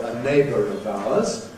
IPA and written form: ə ˈneɪbər əv aʊəz (a neighbour of ours)